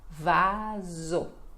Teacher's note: Aqui temos a pronúncia do V, que para nós ela é bem diferente, né, do B, por exemplo. E o S entre vogais que fica com som de Z.